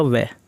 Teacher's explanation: हल्के से होठों को सटा रहे हैं, पूर्ण स्पर्श नहीं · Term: अंतस्थ